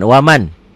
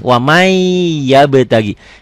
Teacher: Tulisannya ada bunyi n-nya bacaannya n-nya hilang melebur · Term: idgam bunah